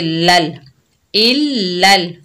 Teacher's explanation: आगे लाम साकिन है, लाम को लाम के साथ मिलाकर पढ़ेंगे